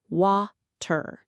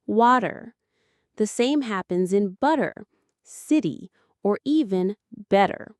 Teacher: in real American speech, that T often melts into a soft D sound